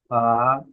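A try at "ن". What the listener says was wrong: নুন, ফা নয় নুন, ফা হলে মাথা গোল থাকতো, নুন।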